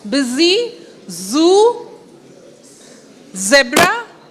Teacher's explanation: you will feel the vibration when you pronounce busy Zoo zebra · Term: buzzing sounds